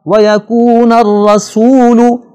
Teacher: را پر زبر ہے، اسے ہم نے موٹا پڑھنا ہے